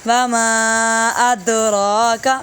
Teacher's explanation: میم پہ مد ہوگی تین الف کے برابر